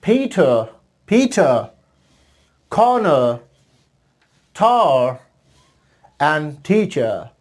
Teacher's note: R का sound produce नहीं होता.